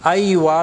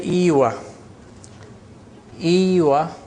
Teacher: Most Arabs use Aywa with Fatha. But in the countryside, especially in Egypt, they say Iwa.